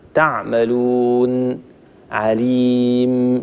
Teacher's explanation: لما تكون النون والميم ساكنة مظهرة مثل حينما نقف على حكيم تعملون، هنا الغنة أيضا فيهما لكن الغنة تكون بمقدار قليل هكذا تعملون عليم، ولا نبتر النون ونبتر الميم، لا نقول عليم تعملون هذا خطأ، فلابد أن نعطي النون والميم حقهما من الغنة